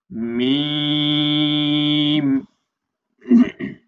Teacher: মিমটা দুই ঠোঁটে শুকনা জায়গা হইতে উচ্চারণ হবে।